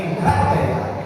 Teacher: essa palavra cra tem uma entonação mais forte para ficar encrateia.